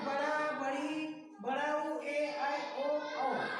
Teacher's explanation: जिन स्वरों के उच्चारण में ह्रस्व से दुगुना समय लगे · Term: दीर्घ स्वर